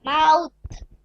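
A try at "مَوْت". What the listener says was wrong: মাউত একালিপ টান দেন।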